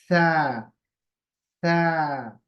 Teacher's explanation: जबान की नोक को सामने के जो दो दांत हैं उनके किनारे पर लगाएंगे और थोड़े सा हवा निकालेंगे